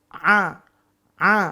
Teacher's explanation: Nah, kalau dilafalkan A itu tidak ada udaranya. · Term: napas tertahan tipis